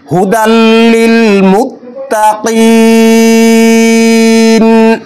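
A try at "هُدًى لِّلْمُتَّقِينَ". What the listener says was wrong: কফটা আর একটু স্পষ্ট হওয়া দরকার। মুত্তাকিন।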